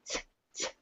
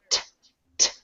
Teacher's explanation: The American T usually sounds a little softer than most T's that are based in Romance languages or many other languages, so the American T is a little more like t, t, instead of the harder t, t.